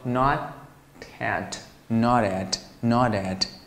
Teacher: 其实既有连读又有浊化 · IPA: /nɑt/ /æt/